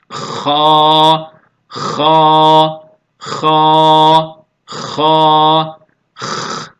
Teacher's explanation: boğazın ağıza yakın olan kısmından hırıltı sesi gelecek şekilde ifade edilen